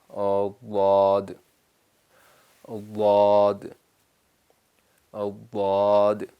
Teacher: تو ضاد کے وقت تھوڑی نرمی ضروری ہے، بالکل ملا کے دال کی طرح نہیں ہونا چاہیے